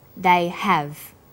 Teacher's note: because stressed the auxiliary verb have the H sound is pronounced